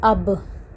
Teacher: The two lips meet and separate. Then we get the Ba sound.